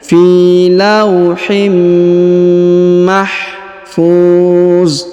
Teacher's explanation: tanwin in bertemu dengan mim bertasdid, maka kita tahan dan kita tekan, tanwinnya menghilang melebur ke huruf mim serta disertai dengan dengung